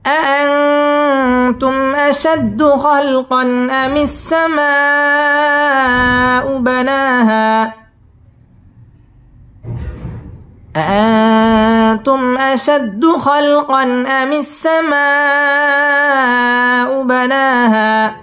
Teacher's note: আমিসসামাউ মধ্যে মুত্তাসিল ৪ আলিফ টেনে পড়তে হবে।